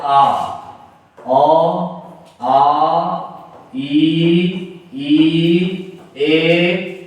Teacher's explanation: अवृत्तमुखी होते हैं। यानी कि इसके उच्चारण करते समय होठों की स्थिति गोलाकार नहीं होती